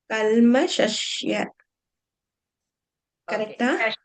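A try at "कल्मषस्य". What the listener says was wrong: இங்க பாருங்க SHA SH போடுறேன் இல்லையா நீங்க லாஸ்ட்ல SHYA போடுறேன் அது SYA மட்டும்தான் இருக்கணும் அஸ்ய சொல்லுங்க அஸ்ய இல்ல அஸ்ய இப்ப எப்படி வருது இஸ் அதேதான் கல்மஷஸ்ய அஸ்யன்னு சொல்லி பாருங்க அப்ப தானா வரும்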